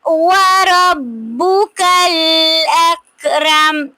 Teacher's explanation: व रब्बुकल अकरम पे मीम को हम साकिन कर देंगे वक्फ की सूरत में, और ये जो काफ साकिन है इस पर कलकला नहीं होगा, क्योंकि ये कश वाला काफ है, ये दूसरा काफ नहीं है जिस पर कलकला होता है।